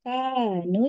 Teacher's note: jadi ka dengan nu sama panjangnya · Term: mad